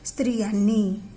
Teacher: जो अनुस्वार आहे तो दिला तरी जातो तिथे परंतु त्याचा उच्चार काय आहे अस्पष्ट रित्या आहे किंवा थोडासाच आहे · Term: अनुनासिके